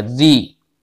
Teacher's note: री जेर होगा तो पुर नहीं पढ़ेंगे